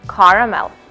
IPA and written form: ˈkɑːr.məl (caramel)